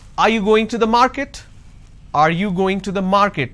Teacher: So when I say are you going to the market, there is a rising tone.